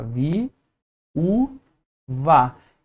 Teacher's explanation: Eu tenho duas vogais, mas cada uma em uma sílaba diferente. Esse é o conceito de iato. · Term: hiato